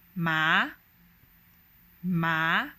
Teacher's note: the second tone starts off from the middle and it ascends all the way to the highest pitch it's an ascending tone